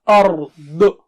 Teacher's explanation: داد بہت موٹا اونچا ہے